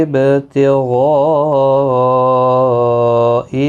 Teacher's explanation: یہاں پر مد متصل ہے، 4 الف کی مقدار کے برابر کھینچ کر پڑھیں گے۔